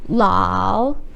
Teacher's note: So this is a third tone, the sharp falling and slowly up.